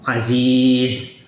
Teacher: tanwin ini tidak dibaca saat wakaf, saat kondisi berhenti.